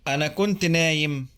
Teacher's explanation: Notice that a schwa vowel comes between kunt and na'im.